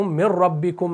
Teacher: پھر مِن رَبِّكُمْ میں رب جو ہے را کو پر کرنا ہے